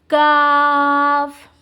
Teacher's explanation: اس کا مخرج زبان کی جو ہے جڑ کی انتہا ہوتی ہے، اس کے مقابل اوپر کے تالو کے مخرج نرمی سے ادا ہوگا